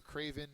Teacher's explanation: the first syllable is accented it means cowardly or a coward